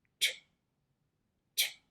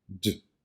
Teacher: The t sound is voiceless and the d sound is voiced. These two consonant sounds are produced in an alveolar position.